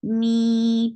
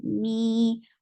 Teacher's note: 2 counts long, and don't drop kasra sound